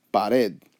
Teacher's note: the stress the natural inflection of the voice goes on the last syllable